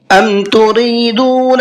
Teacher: را کو باریک کر کے پڑھنا ہے اس لیے کہ را کے نیچے زیر ہے